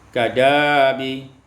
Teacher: ibdalul hamzati, alifan tukarkan hamzah dengan alif